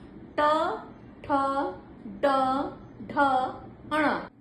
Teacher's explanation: आपकी टंग जो है वो ऐसे तिरछी हो जाती है अंदर की ओर ट और ऊपर वाले भाग को स्पर्श करती है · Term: मूर्धा स्थान